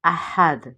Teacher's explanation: دال جو ہے چونکہ ہم اس کو وقف کی صورت میں ساکن پڑھ رہے ہیں تو یہاں پہ ہم کلکلا کریں گے. احد، اور چونکہ تنوین ہے پیش کی تنوین تو اس وقف کو وقف بالاشمام کہتے ہیں.